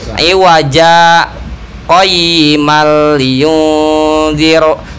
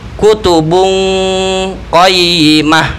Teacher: kalau ada tanwin bertemu qaf itu harus ada dengung ikhfa.